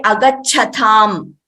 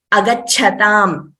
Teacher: only the cha should be heard as a mahaprana. The next letter ta should clearly be only said as a alpaprana.